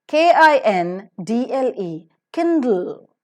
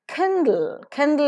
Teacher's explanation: K is to be aspirated. After d, it is immediately l because l is syllabic consonant.